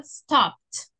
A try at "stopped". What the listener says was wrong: Con la T al final, stopped.